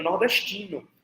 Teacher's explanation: mas é tipo um tzinho, que é um espraiamento do S que vem antes, do S palatalizado, chiado